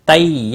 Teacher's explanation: یا لین ہے، تھوڑا نرمی کے ساتھ کھینچ کر ادا کریں گے۔ نا الف مدہ ہے، ایک الف کے برابر کھینچ کر پڑھیں گے۔